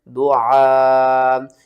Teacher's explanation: اس مد کا نام ہے مد متصل، اس مد کو ہم بڑی مد کہتے ہیں اور اس کو آپ نے 5 الف کے برابر کھینچ کر پڑھنا ہے